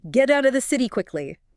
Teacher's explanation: The T in get flaps before out. The T in out flaps before of. The T in city flaps